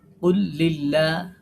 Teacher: আল্লাহ শব্দের লাম বারিক হবে